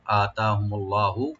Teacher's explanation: আর লফজ জালাল আমরা এখানে ডিপ করে পড়বো একটু